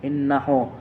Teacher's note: Kalau sebelum ha dhamir hurufnya mati maka itu tidak bisa disebut mat silah qasira. Cara membacanya dipanjang 2 harokat.